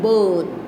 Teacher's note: It is raised to this height, that is somewhere between the half open and half close position. It is a long vowel and the lips are unrounded.